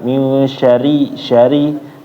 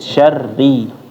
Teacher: Ketika masuk ke rnya dia ditekan sedikit biar kedengaran kalau dia tasdid.